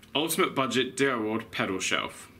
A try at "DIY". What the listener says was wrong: When you said DIY, I think you said like DIY ward or something. Yeah. It sounded a bit funny.